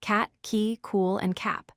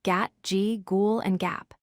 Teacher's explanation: The K sound is voiceless, meaning no vocal cord vibration. The G sound is voiced, meaning your vocal cords vibrate. Both sounds are made at the soft pallet at the back of your mouth.